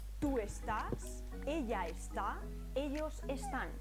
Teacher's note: palabra sí termina en vocal en N o en s pero la sílaba tónica no es la penúltima sino la última